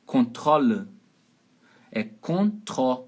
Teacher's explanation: É control. O O é aberto.